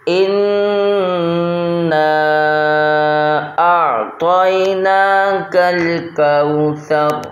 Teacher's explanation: کوثر نہیں پڑھنا ہے، اس لفظ کو کوثر پڑھنا ہے۔ کاف واو زبر کو ہوتا ہے، کو نہیں ہوتا ہے